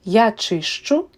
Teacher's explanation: So, ст changes to щ. Щ is comprised of sounds sh and ch. So basically, s changes to sh and t changes to ch. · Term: palatalization